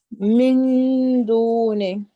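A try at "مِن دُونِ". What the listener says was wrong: A little bit more concealing of the noon sound. You can practice it.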